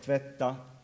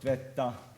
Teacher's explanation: Stress on a short syllable is not so perceptible, so it's enhanced by high pitch. So you, instead of tvetta, you got tvetta with an extra high pitch to remind you of the contrast.